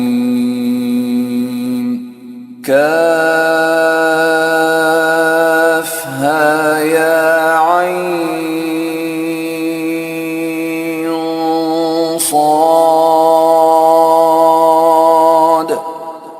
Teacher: حلق کے بیچ میں سے عین ادا کرے